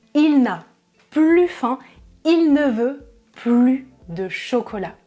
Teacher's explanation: Je ne prononce pas le S parce que la phrase a un sens négatif. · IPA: [ply]